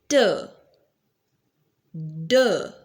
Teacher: alveolar, when tongue touches the alveolar ridge just behind the teeth.